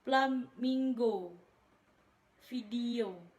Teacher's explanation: Konsonan frikatif labio dental, yaitu F dan V.